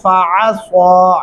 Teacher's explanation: عین گلے سے ادا کرنا ہے اور سواد کو سواد کی جگہ سے ادا کریں گے تو درست تلفظ بنے گا، فَعَصَىٰ فِرْعَوْنُ الرَّسُولَ فَأَخَذْنَاهُ اخذا وبیلا۔